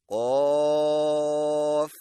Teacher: مشق کیجئے، طا طا طا طا طا طا طا طا طا طا طا طا۔ قاف کی ادائیگی میں زبان کی جڑ کو کوے کے متصل تالو پر لگائیں، یعنی قاف۔ مشق کیجئے، قاف قاف قاف قاف قاف قاف قاف قاف قاف۔